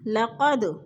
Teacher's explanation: دال ساکن ہے اور حروف قلقلہ میں سے ہے تو ادھر قلقلہ ہو رہا ہے